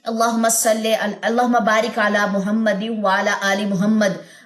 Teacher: یہاں پہ اگر یہاں پہ وقف لیتے ہیں اللہم بارک علی محمد وعلی آل محمد، وقف لیتے ہیں تو دونوں زیریں جو ہے وہ ڈراپ ہو جائیں گی